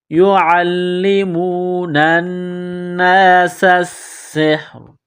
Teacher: نون مشدد ہے، غنہ کریں گے، آواز ناک میں چھپائیں گے، سین کو باریک کرنا ہے، سین میں سیٹی کی آواز پیدا کریں گے